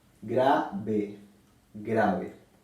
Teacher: la palabra grave es una palabra grave porque se acentúa en la penúltima sílaba